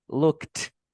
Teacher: So you pronounce that ed like t. So you say looked. Yes. You blow air like looked.